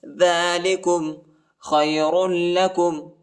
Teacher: را کو لام کے ساتھ ملائیں گے، اور را اور خا کو جو ہے موٹا پڑھنا ہے، لام کو شدت کے ساتھ پڑھنا ہے